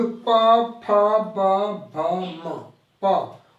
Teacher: ओष्ठ दोनों टच कर रहा है आपस में